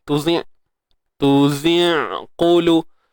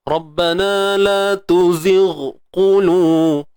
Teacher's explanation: Dia terhapus bunyi ghain tu. Tuzir terus jadi ain.